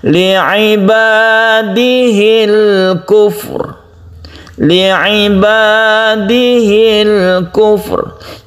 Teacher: ha dibaca pendek, langsung menuju sukun lam.